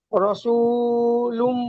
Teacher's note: লুম লুম বানান করছেন মিম তাই লামের উপর দুপেশ আছে তানবিন তানবিনের পরে ইউমিনের চারটি অক্ষরের মধ্যে মিম এসেছে তাই তানবিনকে এক আলিফ গুন্না করে পড়তে হবে একে ইতে নাকিস বলে এখানে বানান করবার সময় গুন্না করে পড়বেন